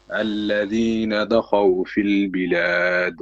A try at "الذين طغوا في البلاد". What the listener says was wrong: الذين طغوا في البلاد. This is not dal or dad. This is ta. الذين طغوا في البلاد.